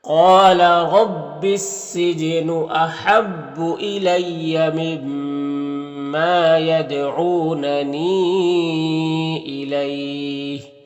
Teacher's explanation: جیم حروف قلقلہ میں سے تو جیم میں قلقلہ ہوگا · قال قاف حروف مستعلیہ میں سے اور یہاں پر الف مدہ، را کو پر زبر اور را کو پر پڑھیں گے۔ یہاں پر الف لام حروف شمس سین کے شروع میں تو الف لام دونوں کو نہیں پڑھیں گے